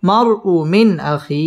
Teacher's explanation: ইজহার গুন্নাহ ছাড়া স্পষ্ট করে পড়তে হবে